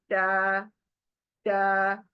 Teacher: दांतों का जो एकदम से जड़ है, वहां पर मेरी जबान चौड़ी होगी और लग जाएगी। और फिर अदा करूंगी मैं टा, टा। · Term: दांतों की जड़